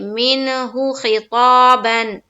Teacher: ساکن کے بعد حروف حلقی میں سے ہا آئی، اس لیے نون کی آواز کو ظاہر کر کے بلا غنہ کے جلد پڑھیں گے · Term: اظہار حلقی